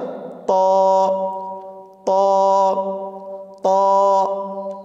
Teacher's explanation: জিহ্বার আগা সামনের উপরের দুই দাঁতের গোড়ার সঙ্গে লাগিয়ে উচ্চারিত হয়, আবার বলি, জিহ্বার আগা সামনের উপরের দুই দাঁতের গোড়ার সঙ্গে লাগিয়ে উচ্চারিত হয় ত, ত, ত। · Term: তর মাখরাজ